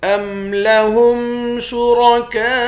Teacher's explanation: کاف کے بعد الف ہے، اس الف پر مد ہے، اس مد کو 5 الف کے مقدار کھینچ کر پڑھیں گے